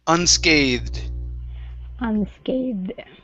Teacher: we have a voiced TH into a D sound